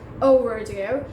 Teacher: So in overdue, stress the second syllable more